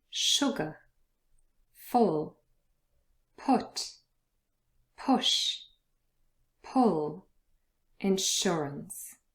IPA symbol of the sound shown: ʊ